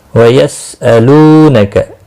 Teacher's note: الو لو و مدہ ہے، ایک الف کے برابر کھینچ کر پڑھیں گے